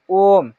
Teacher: इसको कितना भी जल्दी करके पढ़े न क्या होता है य लघु स्वर से लगभग तीन गुना समय ले लेता है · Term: पुलत स्वर